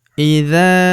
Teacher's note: huruf za kita panjangkan dua harakat karena terdapat tanda alif di depannya